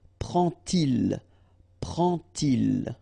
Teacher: you won't pronounce it like D to make the liaison, but you will pronounce it like T